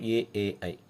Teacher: కంఠం నుండి తాలవ్యముల నుండి పలికే అక్షరాలు కంఠ తాలవ్యములు